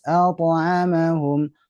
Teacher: pantulan qalqalahnya al-ta'amahum harus terdengar jelas